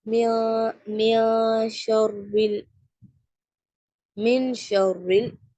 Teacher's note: ஷீன் இருக்கும் ஷீன் இஹபா உடைய letter so நம்ம என்ன என்ன பண்றோம் நூனுடைய சவுண்ட மறைச்சு ஓதுவோம் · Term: இக்பா